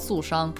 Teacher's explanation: the sh sound is probably the hardest part there's a retroflex in there your tongue is like like make that kind of noise ER